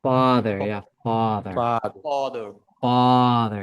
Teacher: maybe the tongue needs to go further to the back the sound has to come a little further back